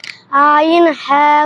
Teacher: 2 নম্বর মাখরাজ হলকের মধ্যখান হইতে আইন হা উচ্চারিত হয়